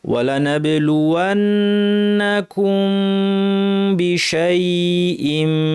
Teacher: ইখফা করার মানে হচ্ছে মিমের গুন্নাটাকে আমরা বর্ধিত করে দিয়ে ঠোঁট না উঠিয়েই বাতে চলে যাব